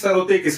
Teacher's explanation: सरोते का स का उच्चारण स्थान होता है दंत मूल दंत मूल जिसे मसूड़ा भी कहते हैं और सरोते का स का उच्चारण स्थान दंत मूल या मसूड़ा होने के कारण इसका वर्ग हो जाएगा वत्स है ना क्योंकि दंत मूल को या मसूड़े को संस्कृत में वत्स कहते हैं।